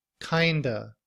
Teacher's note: in reduced form we don't pronounce the V at the end of of we just used the schwa sound uh kind Remains the Same but we blend The Sounds together